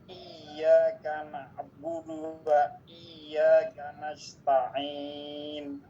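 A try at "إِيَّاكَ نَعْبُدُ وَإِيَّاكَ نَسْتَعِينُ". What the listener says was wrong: Ini bukan ditekan, dipanjangkan, tapi ditekan. Coba nanti rasakan lidahnya. Ini lidah kita nih, ini lidahnya. Lidah ini kan ada tepi kanan, tepi kiri. Ketika kita menyebutkan I, itu tengah-tengahnya, bagian tengah tapi tepi kanan dan kiri itu menempel di geraham kanan dan kiri. Dia kayak mantul.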